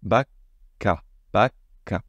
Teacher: cette pause, ce son K que vous retenez dans la gorge.